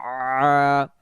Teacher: তখন আইন জবর আ গলা চেপে পড়তে হয় একটু